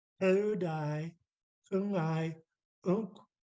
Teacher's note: rounding my lips at the end because the W is not pronounced